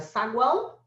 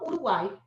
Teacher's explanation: saguão é o tritongo nasal, Uruguai é o seu tritongo oral